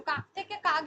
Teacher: অঘোষ থেকে ঘোষে পরিণত হচ্ছে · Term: ঘোষীভবন